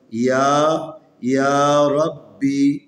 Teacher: یہ را کے اوپر زبر ہے اس لیے اس کو موٹا پڑھنا ہے